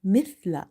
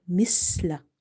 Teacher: If you leave the tongue loose and you don't pronounce the letter tha correctly, you will end up reading seen here. And the moment you will change the pronunciations, it means changing a letter, and you can fall into lahne jali, which can change the meaning of Quranic words.